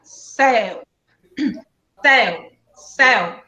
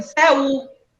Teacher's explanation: Ditongo decrescente. É um ditongo, porque esse U é fraco.